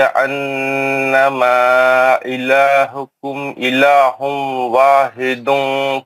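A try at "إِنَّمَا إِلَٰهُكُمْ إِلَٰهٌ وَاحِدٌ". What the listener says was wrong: انما الہکم الہ واحد ہے، وہاں روکنے کا ہے.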